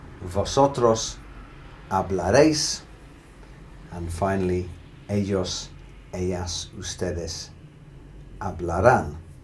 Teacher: So the key in the pronunciation here is stressing that very last syllable for them.